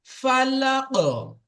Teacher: ধাক্কা খেয়ে যেমন বল যেমন দেওয়ালে মারলে যেমন ফিরে আসে, ঠিক ততরূপ কফের উপর যখন সাকিন করা হবে তখন কফের আওয়াজটা ফিরে আসবে।